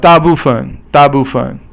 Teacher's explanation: is all fourth tone except for the 分 is 轻 声 or silent tone